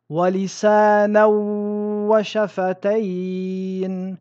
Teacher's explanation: nous fusionnerons le nun dans le waw avec une shadda tout en respectant la runna.